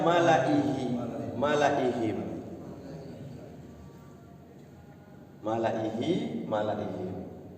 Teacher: Hati-hati kalau kita menemukan di dalam Al-Quran kalimat malaihi bacanya tidak panjang, sekalipun ada alifnya, ya harus dibaca malaihi, malaihim, malaihi, malaihim.